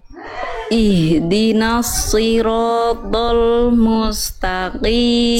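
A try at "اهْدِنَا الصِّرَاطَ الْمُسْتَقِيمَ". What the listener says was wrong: jangan sampai do gitu ya. Kedengarannya kayak do gitu ya. Kayak jadi kayak huruf dal. Do bukan do tapi to gitu ya.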